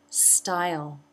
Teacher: Style, another I as in by diphthong. Jaw drops, tongue is down, and then the mid-front part of the tongue raises to make the second part of the diphthong.